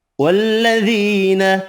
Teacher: یا مدہ 1 الف کی مقدار میں کھینچ کر پڑھیں گے